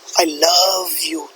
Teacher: word here so love has been underlined so you can understand the stress is on the word love and it shows the depth of feeling